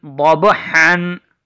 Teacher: ضاد جو ہے یہ موٹا پڑھا جاتا ہے، اس کی ادائیگی میں آواز منہ کے اندر بھر جاتی ہے۔ ضاد با زبر ضب، حا دو زبر حن، ضب حن، حا کی آواز چونکہ حلق سے ادا ہوتی ہے، ضب حن۔